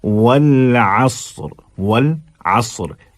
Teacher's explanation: तो अब 2 आगे पीछे जो हैं, जो सौती कैफियत दोनों अल्फाज, दोनों हरूफ की होगी, आइन और रा की, वो हल्की रहेगी, और साद दरमियान में थोड़ा सा भर के आएगा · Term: रा बारीक